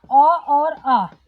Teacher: अ और आ भी आता है कंठ में